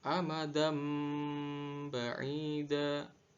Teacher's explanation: suara tanwin pada huruf da diganti menjadi suara huruf mim, sehingga dibaca amadam ba'ida. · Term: iqlab